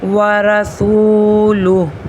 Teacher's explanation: گے، ورسولہ، اس کی لاسٹ میں جو ہے ورسولہ نہیں پڑھنا، ورسولہ پر ٹھہر جانا ہے، ہا کو ساکن کرنا ہے،